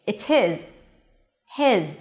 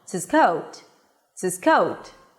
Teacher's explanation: I'm stressing the word his, so I'm pronouncing the H. It's his. Now, If I'm just using it in a sentence in an unstressed position, for example, it's his coat, then the H is dropped. · If they're stressed, the H is absolutely pronounced. If they're not stressed, the H drops.